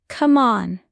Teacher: Voice goes up. Strong energy.